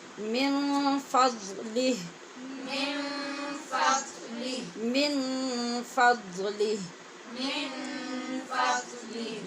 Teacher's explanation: من کے نون پہ اخفا ہے، اخفاء حقیقی، کیونکہ آگے فا حروف اخفا میں سے ہے۔